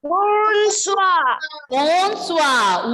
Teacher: That is because when you have OI together in French, pronunciation will be OUA. · Ending letter R will be silent and pronunciation is bonsoir.